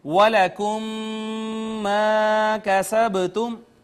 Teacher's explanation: میم ساکن کے بعد ایک اور میم آ گئی، یہ ادغام شفوی ہو گیا. اس کے بعد الف مدہ ہے، ادغام شفوی ہوا، میم مشدد ہو گئی لہٰذا غنہ بھی الٹیمیٹلی ہوگا یہاں پر.